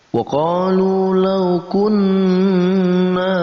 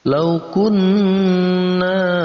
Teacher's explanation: Maka kita dengungkan huruf nun yang bertasydid ini dan kita panjangkan dengung itu sampai 2 ketukan. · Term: gunnah musyaddadah